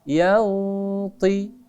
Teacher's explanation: Samar tetap dibaca dengung. Hanya bunyinya samarkan antara bunyi nun dengan huruf yang ada di depannya. Antara bunyi nun huruf to disamarkan. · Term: ikhfa